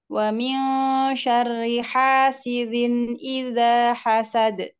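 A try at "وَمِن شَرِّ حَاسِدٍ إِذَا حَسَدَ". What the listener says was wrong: hasidin, jelasin dalnya. Hasidin. Nah, tadi di awal tadi seperti suara zin. Wa min syarri hasidin idza. hasidin.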